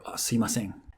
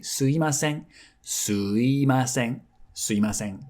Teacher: sumi gets reduced quite easily, and so most of the time you'll hear or say すいません。すいません。すいません instead of すみません.